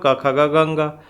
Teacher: क्वर्ग मतलब क ख ग घ अंग, ह और विसर्ग, तो इनका जो उच्चारण होता है हमारे कंठ से होता है। कहाँ से?